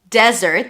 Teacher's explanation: we have desert, stress on the first syllable.